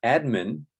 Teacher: Administration yeah so the original stress syllable is no longer there admin is stressed on the first syllable Administration is stressed on the one two three four fourth syllable